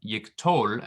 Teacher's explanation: So the tol is the accented part.